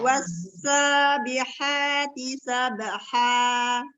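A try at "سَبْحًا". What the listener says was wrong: Baknya jangan ada e-nya. Sabha.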